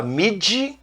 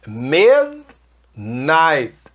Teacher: Mid, não fala mid, midnight. E o T quase morrendo lá no final, ok? Midnight.